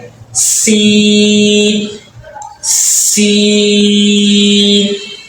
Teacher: جو زبان کی نوک ہے دو نیچے والے دانت کے ساتھ لگے گی